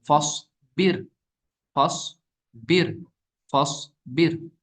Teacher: रॉ साकिन से पहले जेर है, ये जेर असली भी है और इसी वर्ड में भी है। तो इस रॉ साकिन को क्या पढ़ेंगे हम, बारीक पढ़ेंगे।